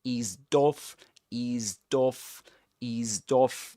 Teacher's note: This is not pronounced as s, but z. Eased off with a long E. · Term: catenation